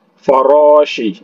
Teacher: Kemudian farashi, Ra-nya 2 harokat. Nah, kemudian Ra-nya ini ditafhimkan, ditebalkan.